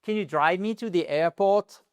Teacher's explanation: là, on remonte pour le coup parce qu'on a une yes, no question